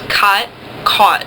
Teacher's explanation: especially in America, sometimes people don't make a difference between ah and aw. I do in my dialect, but there are dialects that don't.